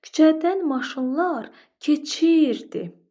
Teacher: Baxın biz vurğunu hara saldıq? Ir hecasının üzərinə. Bunu daha qüvvətli dedik. İr hecasının üzərinə vurğu saldıq.